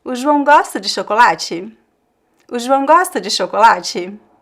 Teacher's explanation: So you see that I changed the intonation of the verb and the last word. We could have different variations of intonation here, but it is always like this rising intonation when you're asking a question in Portuguese.